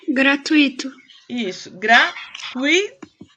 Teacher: Isso, gratuito. É tui, é junto, tá? Ela é um ditongo. E ela é paroxítona.